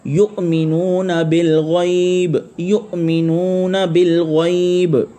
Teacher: وہ لفظ جب پڑھتے ہیں تو یہ حمزہ پہ جھٹکا لگتا ہے